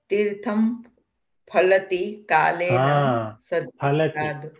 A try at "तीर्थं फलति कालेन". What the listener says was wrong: फलति न फलति. So the reason I keep bringing that up again and again is संस्कृते तु फ इति शब्दं नास्ति, फ एव।